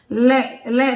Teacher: ले का उच्चारण स्थान क्या है, दंत है। ले ले जब हम बोलते हैं तो हमारी जीभ का अगला भाग हमारे दांतों को क्या करता है, स्पर्श करता है।